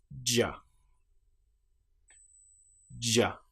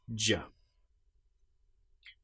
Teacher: You can feel the vocal cords engaging because this is the voiced sound.